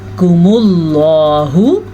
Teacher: लफ्ज़ अल्लाह को हम पुर पढ़ेंगे क्योंकि लफ्ज़ अल्लाह से पीछे वाले हर्फ के ऊपर पेश है